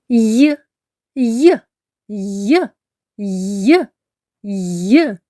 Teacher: ми не можемо довго протягнути звук й Отже він приголосний приголосний звук й завжди м'який